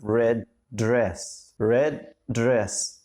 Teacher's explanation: مش هنطق الدي لوحدها والدي لوحدها، لا هما الاتنين نفس الصوت، ودي انتهت بالدي ودي بدأت بحرف الدي برضو، هخلي الاتنين كأنهم واحد، فأقول red dress كأن الاتنين واحد.